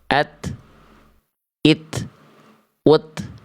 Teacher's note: makhraj huruf ta keluar dari ujung lidah menyentuh ke pangkal gigi sari atas